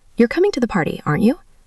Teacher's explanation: The intonation of tag questions is very important because it changes the meaning. If you're really asking for confirmation and you're not sure of the answer, your voice goes up.